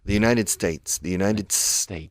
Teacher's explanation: Con la D de United, ya estás con la S de States.